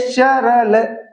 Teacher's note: वर्तस्य का उच्चारण स्थान दंत प्लस मसूड़ा, मतलब दांत प्लस मसूड़ा या दंत मूल